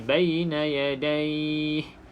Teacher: Bila kita waqaf, kita kena panjangkan pada kalimah ni. Pada perkataan yadai, kita boleh baca 2, 4 ataupun 6 harakat. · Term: mad lin